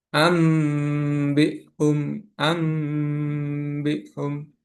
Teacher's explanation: Maka nun atau tanwin diubah menjadi suara mim dan dibaca dengan gunah atau dengung selama 2 harokat. Huruf ikhlab hanya satu yaitu ba. · nun bertemu dengan ba dibaca dengan mendengung